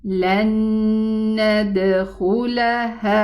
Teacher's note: Okay, so this is why this noon shadda shows that this idgham, this merging, is complete. This noon totally merged into the noon and it did not leave its ghunna behind, and this ghunna that we are pronouncing is the ghunna of the noon fatha. · The merging of the noon happened because we have a noon after it, another noon. So we have a noon sukun after it, a noon with a fatha. · the scholars said that this ghunna that we hear belongs to the second noon, this one, because the noon usually has a ghunna built-in sound.